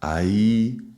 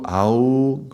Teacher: So, the A going towards the U or the A going towards the E. E is going forward, U is going upwards. So, U, "au" going up, "ai" going forwards.